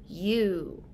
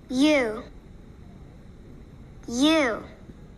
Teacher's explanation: you stick out your lips a little, and they're a little bit more closed than when you make the long O sound, and make the sound like this, U. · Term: long sound of the letter U